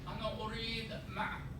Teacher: Notice in modern standards, ma, and then that is a glottal stop